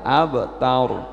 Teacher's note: Rok mati setelah harokat fathah dibaca tebal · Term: ra tebal